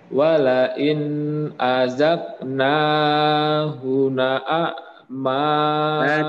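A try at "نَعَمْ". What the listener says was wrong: Tidak na'ama. Langsung na. Na.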